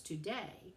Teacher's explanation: And so today would be an example of an iambic foot. So see how there's two syllables, today, and the stress is on the second syllable.